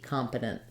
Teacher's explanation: And then I can either say competent, where I use more of a flap here, and I drop the schwa. I go right to the syllabic end, competent, and then I use an unreleased, or I drop that T, competent.